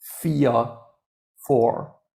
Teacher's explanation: 4 and 4 both have in common that you don't really pronounce the R at the end. Yeah, 4, not 4.